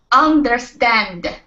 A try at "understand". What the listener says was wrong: There you go. That's the sound.